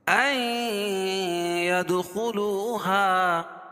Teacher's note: یہاں ادغام مع الغنہ ہوگا کیونکہ نون ساکن کے بعد ادغام مع الغنہ کے 4 حرفوں میں سے یا ہے تو یہاں غنہ کر کے پڑھیں گے۔ ید دال پر قلقلہ، خلو خو خا کو پر پڑھیں گے، لو و مدہ، اور ہا الا مد منفصل ہے کیونکہ حروف مدہ کے بعد حمزہ دوسرے کلمے میں تو مد منفصل ہوتا ہے، اس میں توسط اور قصر ہے۔